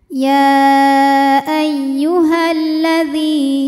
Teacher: karena pada lam tasdid ini ada lam sukun dan lam fathah lam yang sukun tidak dibaca kita langsung masuk ke lam kedua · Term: alif lam syamsiah, alif lam syamsiyah